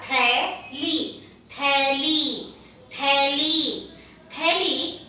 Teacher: Now let us have the dental T aspirated, which is th. Th with a matra, theli.